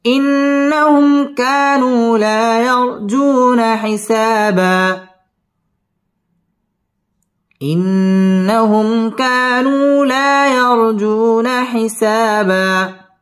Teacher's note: ইন্নাহুম মিম সাকিনে ইজহারে খাস, গুন্না ছাড়া পড়তে হবে।